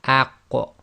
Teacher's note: So again, this is pronounced as aq, and we purposely separate and make sure there's a slight echo on it